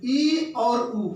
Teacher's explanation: ई और उ जो आपके समृद्ध स्वर हैं, इनके उच्चारण में मुख विवर बहुत छोटा बनता है